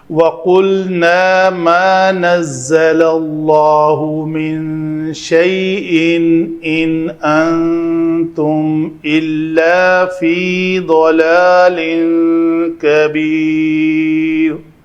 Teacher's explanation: نون ساکن کے بعد حمزہ ہے تو ہم اس نون کا اظہار کریں گے